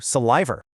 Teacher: The big issue here is severe hypercorrection. the speaker overexerted their effort, kind of forcing this intrusive R coloring into words where the spelling just doesn't dictate it. That's exactly how a word ending in a soft vowel like saliva somehow mutated into salivor.